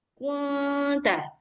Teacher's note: Samar dengan berdengung. Jadi suara nunnya samar-samar